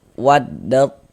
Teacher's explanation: Maka cara membacanya, huruf ta ini dimasukkan ke huruf to, melebur ke huruf to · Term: idgham mutajanisain shaghir